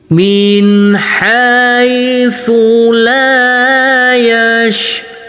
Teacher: iramah nada datar dengan panjang dua harakat